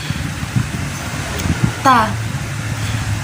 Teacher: ujung lidah bertemu pangkal gigi seri atas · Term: huruf tas